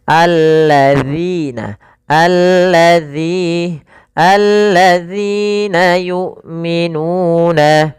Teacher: Usahakan lidahnya nempel, jangan allazina, jangan dibaca dengan allazina yu'minu, tapi alladzina yu'minuna.